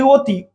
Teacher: আমরা কিন্তু এটা ওয়াতি বলি না, আমরা বলি অতি। ও, ও মানে মুখটা গোল হচ্ছে, খেয়াল করেন, আপনিও বলেন ও, মুখটা গোল হচ্ছে